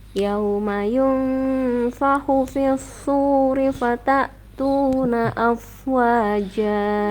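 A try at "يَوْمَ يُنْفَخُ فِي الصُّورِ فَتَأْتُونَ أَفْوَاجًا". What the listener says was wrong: Ya, yunfahu ya, itu haknya lebih dijelaskan lagi ya.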